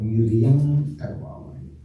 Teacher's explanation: It changes, Makara changes to the nasal of its class of Ka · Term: Sandhi